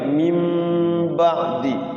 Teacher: nun sukun bertemu ba, iqlab ditahan kayak guna sama ya. Mim mingkem ya, bibirnya mingkem.